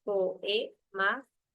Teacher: Está separando dos vocales abiertas, la vocal O y la vocal E. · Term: hiato simple